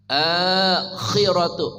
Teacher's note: Ad-daru lakumud daru, roknya tebal tafkhim ru gabala ru ya, ru lakumud daru ya, ru lakumud darul akhiratu, a-nya panjang, akhiratu namanya mad badal, akhiratu kha khihu, akhiratu dari ujung kerongkongan, kha khihu ngoroknya terdengar jelas.